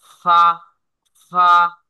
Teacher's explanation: নিচের ঠোঁটের এর পেট সামনের উপরের দুই দাঁতের আগার সঙ্গে লাগাইয়া